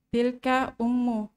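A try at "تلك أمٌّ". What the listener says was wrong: Ummu atau umun? Umun ya. Jangan ragu-ragu mentanwin kalau tidak ada al.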